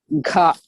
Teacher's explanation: aspirated one. You have to breathe out, or you are throwing air from inside. That is gha, aspirated one.